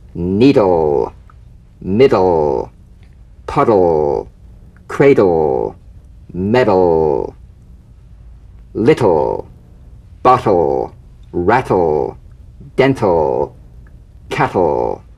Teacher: DL and TL cognates voiced and unvoiced tongue tip to gum ridge consonants. Bounce the D or T drum bead off the gum ridge and return there immediately for the L.